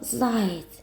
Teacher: звучать м'яко завдяки як та м'якому знаку спробуємо вимовити слово заєць м'який знак у кінці слова пом'якшує приголосний ц чуєте м'яко він звучить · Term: пом'якшення приголосних